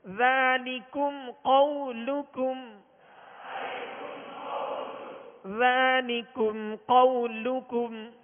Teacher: ذلكم قولكم، ذالکم میں کاف باریک پڑھیں گے، ڈنڈی والا کاف ہے، اور قو یہاں قاف موٹا ہے، دو نقطے والا قاف، حروف مستعلیہ میں سے، لہذا اس کو پر پڑھیں گے. قولکم آخر میں جو کاف ہے اس کو بھی باریک پڑھیں گے.